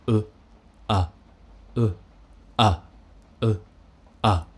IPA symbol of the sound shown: ʌ